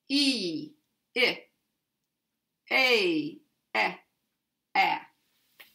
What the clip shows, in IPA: i ɪ e ε æ